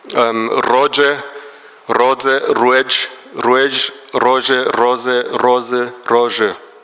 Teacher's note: Allophonie der Sibilanten, das haben wir in den meisten Norddialekten, also dass Roje zu Roze wird oder zu Rose, die Desafrizierung von Je.